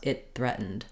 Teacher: we do what's called co-articulation here that we're linking that t to the th and we basically put our tongue ready